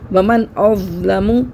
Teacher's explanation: یہاں پہ دیکھیں نون ساکن کے بعد حمزہ آ رہا ہے حروف حلقی میں سے، حمزہ، ہا، عین، ہا، غین، خا میں سے حمزہ آ رہا ہے تو یہاں پہ ہم غنہ نہیں کریں گے، صرف ظاہر کر کے پڑھیں گے نون ساکن کو